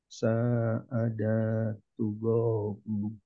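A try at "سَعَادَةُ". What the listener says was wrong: Da-nya masih kepanjangan.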